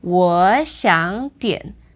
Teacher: That's the first two becomes second tone, and the third word stays the third tone.